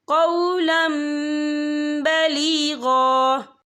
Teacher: ہم تنوین کو جو ہے میم کے ساتھ ملا کر پڑھیں گے اور ہم یہاں غنہ بھی کریں گے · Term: انقلاب